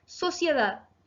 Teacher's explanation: Sociedad se acentúa en la última sílaba, por lo tanto es aguda y no lleva tilde porque termina en D.